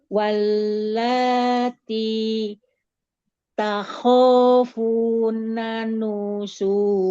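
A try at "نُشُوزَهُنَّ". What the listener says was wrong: Nusyuzahun. Nah, ini huruf zai, bukan ja. Hun ada gunanya.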